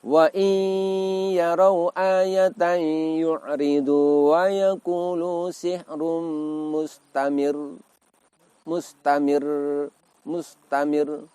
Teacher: salah satu sifat dari huruf ro adalah takrir, yang artinya bergetar.